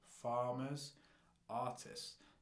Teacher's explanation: Okay, that R sound in the beginning and the fact that they've got 2 syllables and the stress is on the first syllable.